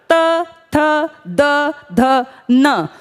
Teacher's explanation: आपकी जो जीभ है, जो आपकी जबान है, वो दांतों का सहारा ले रही है और दांतों पे आके प्रेशर है हवा का, जो प्राण वायु बाहर आ रही है इसका प्रेशर आपके दांतों पे है।